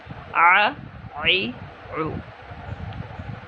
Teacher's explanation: عین میں حمزہ نہ آئے، بالکل اس کو گلے کے درمیان سے ادا کریں گے، حلق کے درمیان سے، ع، عی، عو۔